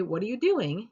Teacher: using a rising tone, it comes across as a normal question and little subtext is added